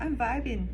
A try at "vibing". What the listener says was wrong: I'm vibing. If first of all, get rid of the G. I know it's spelled vibing, but we say vibing. I'm vibing. That's with most things. We get rid of the G.